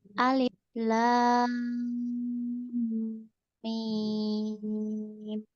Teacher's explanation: Kurang panjang lam sama mimnya.